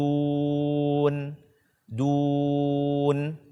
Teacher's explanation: Berikanlah haknya untuk dibaca dengan gunnah atau dikeluarkan sedikit dari hidung kita. Tidak boleh kurang atau tidak boleh hilang dan tidak boleh pula kita membacanya berlebih.